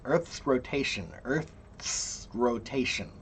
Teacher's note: When you get to the S, don't think about the S as part of Earth. Think about the S as part of rotation.